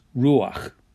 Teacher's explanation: first first consonant middle vowel and there's your second consonant but because it's a guttural it likes to have that a sound so this becomes ruach · With this type of noun where you have a vowel in the middle with just 2 letters, if the last consonant is a guttural, then you get a furtive pathach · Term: furtive pathak